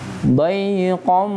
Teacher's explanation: kalau gunnah jangan hanya bunyinya saja Pak, tapi harus masuk kemana? Ih, pangkal hidung, dengung.